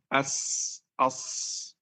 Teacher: Di sin dan sad suara peluit ini mirip suara burung. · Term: sifat as-safir